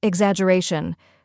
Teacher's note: First we have ig, which sounds like the ig in ignore. Next is zaj, which rhymes with badge and carries the main stress. Then comes a short unstressed vowel sound like the A in sofa.